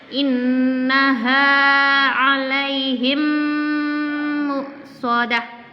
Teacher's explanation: Ada mim ketemu huruf mim. Mim mati ketemu huruf mim. Maka harus ditahan juga.